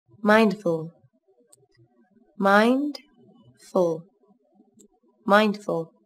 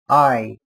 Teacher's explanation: Các bạn chú ý đọc âm A nối với âm I. Âm A đọc dài hơn âm I một chút là được nhé. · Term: Nguyên âm đôi